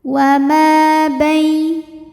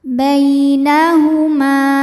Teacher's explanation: Bai ada harfulin sebab ada ya sukun sebelumnya berbaris fathah maka dibacanya lembut.